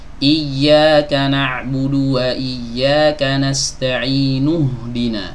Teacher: Ya, digugurkan, dianggap tidak ada hamzah wasol.